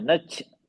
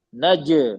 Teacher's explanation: जीम का मखरज जबान का बीच से तालु पे चिपक जाता है, चिपक जाता है